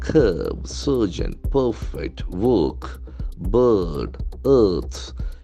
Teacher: So our letter R will be silent. And since it is after a vowel letter, the C will have a sound.